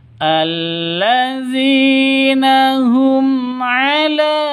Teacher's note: Di sini ada mim mati bertemu dengan ain. Jelas, terang, tidak boleh dengung, tidak boleh disentak. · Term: izhar safawi